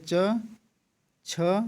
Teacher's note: छ ध्वनि का उच्चारण स्थान क्या है, जो आपका तालव्य है